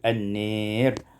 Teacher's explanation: Pada ayat yang ke-31, an-nari, imalatu fathatun nun wal alif, dibaca imalah fathah nun dan alif menjadi an-nir.